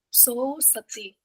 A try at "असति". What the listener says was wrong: asati, not asasi, asati.